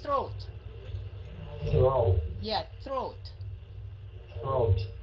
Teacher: Cái âm TH phải le lưỡi ra, đọc thành âm T đó mà phải le lưỡi